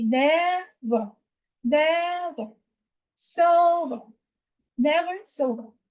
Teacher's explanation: So ne and ver did have the same syllable length because we have an E before R. Therefore, the E before R is a schwa sound. Even with sober, the E before R is a schwa sound.